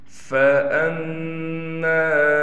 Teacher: میم پر تشدید ہونے کی وجہ سے میم پر غنہ کیا جائے گا